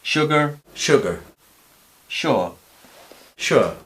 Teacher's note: Cuando va la S sola, a veces también se pronuncia así, como si fuera SH.